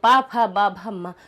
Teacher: 5वां वर्ग हमारे कहाँ से निकला, उष्ट से निकला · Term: उष्ट वर्ग